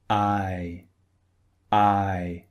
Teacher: Like the previous sounds we studied, one is long and the other is short. So the first sound I is long as you noticed by the symbol. It's actually two vowels pushed together.